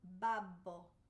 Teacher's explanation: Babbo. Everything's like really implosive actually with your lips.